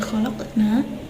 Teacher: Cara membacanya memantulkan huruf qalqalahnya dengan ringan dan menyambungkannya dengan bacaan setelahnya, sebab qalqalah ini tepat berada di tengah-tengah gitu. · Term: qalqalah sukro